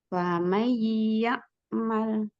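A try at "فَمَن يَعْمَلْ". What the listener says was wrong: Famai tahan dulu. Kasih tempo untuk gunahnya.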